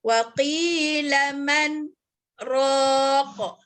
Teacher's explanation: Berhenti tanpa mengambil nafas dengan tujuan nak menyambung balik ayatnya. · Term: saktah